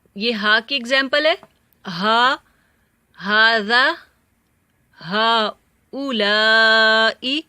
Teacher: ہا گلے کے نیچے حصے سے اور حمزہ بھی سیم جگہ سے